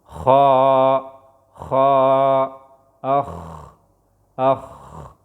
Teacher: دا د مرۍ د برنۍ حصې نه ادا کېږي